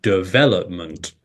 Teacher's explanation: the stress syllable comes on the second syllable and you say development